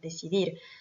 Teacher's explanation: Donc l'accentuation se fait sur la dernière syllabe. Decidir, c'est forcément la dernière syllabe également, puisqu'on a un mot qui se finit par une consonne qui est ici un R. Decidir.